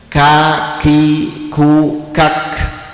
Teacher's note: tapi ka ada nafas yang keluar ini namanya Hames · itu syiddah atau jahar itu ya jadi ditekan kemudian nafasnya keluar jadi suaranya ditahan tapi nafasnya keluar ka Nah itu namanya Hames